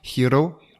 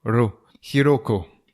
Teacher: Le R est un petit peu roulé. Il se prononce entre le R français et le L. Ro. Donc c'est pas non plus un R roulé à l'espagnol, mais c'est ce que ça donne.